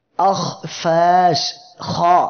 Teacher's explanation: ইস্তেআলার হরফগুলো তাদের মাখরাজ থেকে উচ্চারণের সময় জিহ্বার গোড়া উপরের দিকে উঠবে, যার ফলে হরফগুলো মোটা হবে।